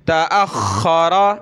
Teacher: तअख्खर, तअख्खर, ये कलर जो है मोटा करने के बारे में, मोटा करेंगे ख और रा को